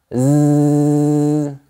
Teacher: la lettre S se prononce Z quand elle est située entre deux voyelles. Ça vibre, comme ça. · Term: le son Z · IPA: [z]